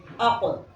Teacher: यानी आवाज़ का उचटना। जब ये हर्फ साकिन हो तो इनकी अदायगी में आवाज़ में एक उचट पाया जाएगा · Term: क़लक़ला